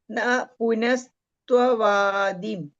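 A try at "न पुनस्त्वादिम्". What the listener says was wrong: Tavadim, not Tvadim, Tavadim.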